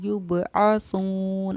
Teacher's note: क़ाल अंज़िरनी इला यौमि युबअसून, आइन को बिल्कुल वाज़े बिल्कुल क्लियर ज़ाहिर करना है। युबअसून आइन को हलक़ से हमें ज़ाहिर करना है कि इसकी आवाज़ हलक़ से आनी चाहिए